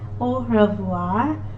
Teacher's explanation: do not try to amplify the sound of the letter r in french it has to be very very gentle oh revoir party that's all i can explain you about the